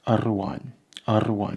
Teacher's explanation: It rolls a bit at the flick of the tongue at the top. A bit like the Spanish one, but a bit forward. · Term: trilled R